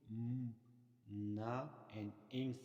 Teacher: However, when the velum is lower and the air stream is allowed to flow through the nose to produce m, na, and ing sound. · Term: nasal